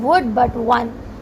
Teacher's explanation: Word is starting from W but it is giving the V sound, and one is starting from O but it is also giving the V sound